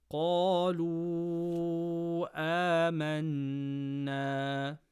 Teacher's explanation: Qaf from khussa daghatin qidh, full mouth. Stretch letter before hamza in the next word, mad munfaṣil, 4 harakas. Nun mushaddada gunna.